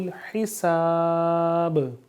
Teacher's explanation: ہا کو واضح کر کے حلق سے ادا کریں گے